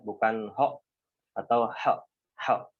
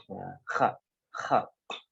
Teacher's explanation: yang harus diperhatikan dalam huruf kha ini adalah dia harus ada dengkuran ya. Nah, harus ada dengkuran kha.